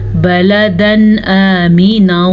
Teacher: तनवीन के बाद हलूफ़े हल्की में से हमज़ा आ गया है तो हम तनवीन को ज़ाहिर करके बग़ैर गुन्ने के पढ़ेंगे, यानी यहाँ पे रुकना नहीं है।